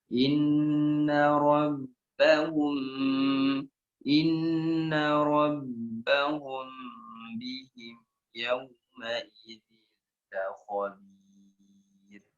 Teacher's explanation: ada mim bertemu dengan ba, mim sukun bertemu dengan ba, digunahkan